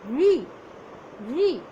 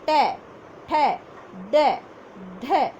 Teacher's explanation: री। आप देखेंगे आपकी जीभ आपके मुख के अंदर के ऊपर वाले हिस्से में यानी मूर्धा भाग में स्पर्श करेगी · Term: मूर्धन्य ध्वनि